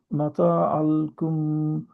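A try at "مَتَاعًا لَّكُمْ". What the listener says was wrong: মাতা মাতা আল্লাকুম, মাতা আল্লাকুম, কারণ ওখানে লিয়াম দুইটা আছে।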